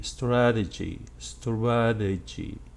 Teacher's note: in the noun case it was a flap t strategy strategy and the vowel after that t is not a long one it's just a schwa